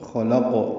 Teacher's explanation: خلقنا میں خا پر قاف پر بیچ میں لام باریک ہے اور قاف ساکن ہے، اس پہ قلقلہ ہوگا